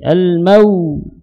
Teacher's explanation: Jadi dirasakan suara di bibir tersebut. Kemudian waw tersebut makhrajnya kedua bibir dimajukan. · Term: lin